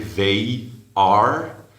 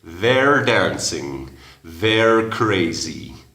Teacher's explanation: They are, hay una Y ahí claramente, they are, pero en la contracción dices their, como schwa